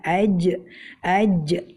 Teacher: itu atau seperti kita membaca AJ ya maka kita akan mendapati suara kita tertahan karena tengah lidah kita menempel dengan rapat ke langit-langit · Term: huruf Jim